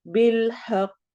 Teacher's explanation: कॉफ हरूफ कलकला में से है, इसलिए हम यहाँ पे कलकला करेंगे, हमारी साउंड आवाज जो है उसमें एको आएगी